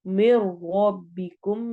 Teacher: मिर रब्बिकुम में भी अगेन इदगाम हो रहा है लेकिन बगैर गुन्ना के, चूंकि रॉ आ गया है। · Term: इदगाम बिला गुन्ना